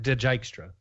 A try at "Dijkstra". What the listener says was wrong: adding an I in there somewhere. Dijkstra. It's a silent J.